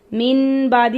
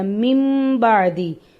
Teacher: نون ساکن اور نون تنوین کے بعد اگر حرف با آئے تو نون ساکن اور تنوین کو میم سے بدل دینا، نون کی آواز نہیں آئے گی. اب میم بعدی ہے، من بعدی نہیں کہنا، میم بعدی، میم کی آواز سے بدل دیں گے. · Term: اقلاب